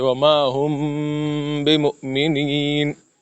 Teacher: میم کے بعد جب با آ جائے، ہم نے پڑھا تھا کہ وہاں پہ ہم غنہ کریں گے